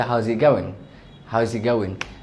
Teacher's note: what you're gonna do is drop the T